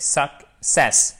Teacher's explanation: c'est l'accent tonique qui est sur cette seconde syllabe. Vous avez ici un E atténué et là, cette voyelle qui en phonétique est comme ceci.